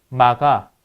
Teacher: K가 아니라 G로 써야 돼요. 네, 유성음이니까 어중이니까요.